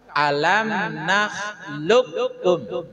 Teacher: yang tadinya ada bunyi qqala sekarang sudah tidak nampak lagi kokolahnya langsung masuk ke Kaf